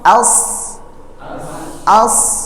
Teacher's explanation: dia keluar dari tempat yang sama dengan Sin tetapi ada bunyi tebalnya atau bunyi Onya jadi SH ya Jadi dia sama dengan huruf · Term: Shad